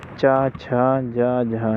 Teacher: चा, छा, जा, झा, ये जो है स्पर्श संघर्षी कहलाती हैं।